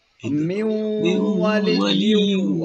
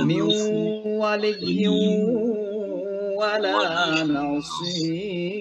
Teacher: jadi suara nun masuk ke waw, namanya idgham